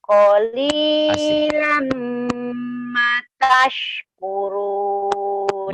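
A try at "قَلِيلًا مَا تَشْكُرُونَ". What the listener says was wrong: Maknya panjang. Qalilam ma. Ayo. Qalilam ma tashkurun.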